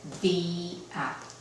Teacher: Ahí se acentúa la I y ya no queda como un diptongo. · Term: el diptongo queda destruido